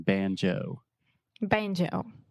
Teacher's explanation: we really exaggerate that moving vowel the o sound